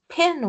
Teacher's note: It's a lax I before an N, so it's going to be nasalized.